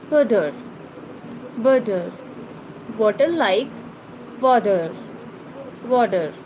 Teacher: The T sound between vowels in American English often becomes a flap T, sounding like a quick T.